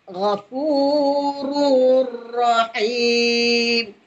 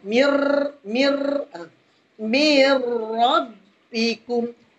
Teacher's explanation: Contohnya, Ghafurur Rahim. Bila kita sebut huruf ra ni, dia ada sikit getaran. Kerana huruf ra ni sifat dia takrir. Dia ada dia bergerak di hujung lidah.